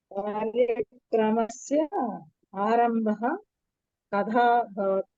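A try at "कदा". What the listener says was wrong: కథా కాదండి, కథా దా రావాలి, థా కాదు.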